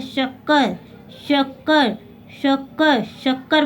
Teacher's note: ठीक है, देखो ये मैंने क्या बोला यहाँ पे श, ये हमारा क्या हुआ श और स, तीनों श में हमारे अंतर है। ओके, ये श जो हमारे तालु से बोला जाता है इसको बोलते हैं श